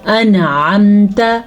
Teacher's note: یہاں پہ نون کو ظاہر کر کے پڑھنا ہے کیونکہ یہاں پہ تجوید کے حساب سے اظہار کا قاعدہ ہو رہا ہے. انعمت، آئین کو کلیئر کرنا ہے آپ نے، انعمت نہیں پڑھنا آپ نے.